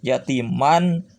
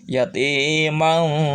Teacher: Yatimang pakai dengungan, suara masuk ke pangkal hidung.